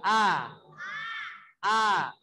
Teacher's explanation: suara huruf hamzah itu terbuka artinya terbuka celah diantara lidah dan langit-langit terus dibuka jadi bunyinya a Silahkan buka a-a-a-a huruf hamzah tidak